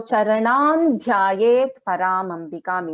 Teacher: the anuswara is replaced by the fifth letter of that corresponding varga